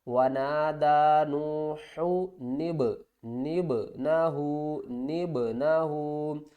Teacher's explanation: اب اس سے پہلے نون ہے، تو ہم کیا کریں گے، نون کو با کے ساتھ ملا کر پڑھیں گے، یہ بھی حروف قلقلہ با ہے، اس کو بھی ہلا کر پڑھیں گے